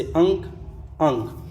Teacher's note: अनुस्वार वर्ण में नाक से अधिक सांस निकलती है और मुंह से कम